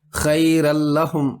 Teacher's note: نون کی آواز بالکل نہیں آئی